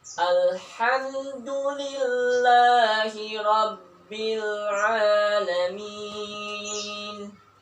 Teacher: bagian ain dan h, itu keluar dari tenggorokan tengah, ya, tengah, yang disebut al-wasatu, ya, yaitu tenggorokan tengah, a dan h.